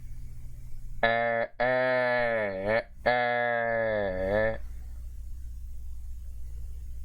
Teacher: And now we have the front mid unrounded vowel